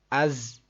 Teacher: اس کو تھوڑا سا سختی سے پڑھنا ہے، سیٹی کی آواز جیسا کہ زا یہ آواز آنی چاہیے۔